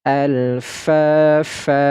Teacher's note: Tidak lagi dibaca fan, tetapi dibaca fa dan dipanjangkan 2 harokat. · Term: mad iwad